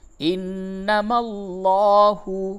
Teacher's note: نون مشدد ہے اس جگہ پہ غنہ ہوگا